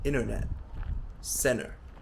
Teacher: You'll notice that the T isn't properly pronounced, like internet, center.